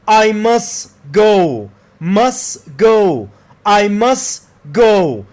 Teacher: The T and D don't get pronounced. When a T sound comes between two consonant sounds, it's often not pronounced. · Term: T and D elision